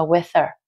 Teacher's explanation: Có thể được đọc nhanh là with her. Tức là cái chữ H ở phần her, cái âm her đó các bạn có thể bỏ được